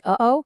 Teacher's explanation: Glottal stops, that little catch in your throat in a word like uh-oh